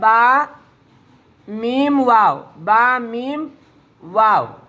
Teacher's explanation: दोनों होठों के गीले हिस्से से बा अदा होता है।